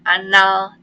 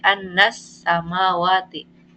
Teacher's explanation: Ada alif lam tapi enggak dibaca jelas. Jadi bukan anal tapi annas samawati. · Karena alif lam menghadapi huruf sa. Membaca alif lam samsiyah itu berarti alif lamnya nggak dibaca jelas.